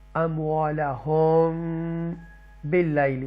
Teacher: मीम साकिना के 3 rule मैंने आपको बताए थे कि इदगाम शफ़वी, इख्फ़ाए शफ़वी और इज़हार शफ़वी। तो यहाँ पर इख्फ़ाए शफ़वी हम रूल अप्लाई करेंगे और गुन्ना भी करेंगे